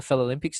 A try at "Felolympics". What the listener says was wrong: Mate, you've added an extra syllable, but I'll let you get away with it. Felolympics.